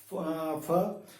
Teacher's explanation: हमारा जो ओठ का निचला होठ है वो ऊपर वाले दांत के साथ जाकर रुकता है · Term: दंतोष्ठ